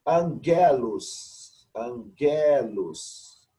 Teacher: Gama, perto de outro gama. Esse gama vai ter som de N.